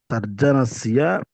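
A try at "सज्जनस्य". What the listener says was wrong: అరే చా కాదు, ఏమండి, రా కింద చా కాదు, చా కింద చా. సజ్జనస్య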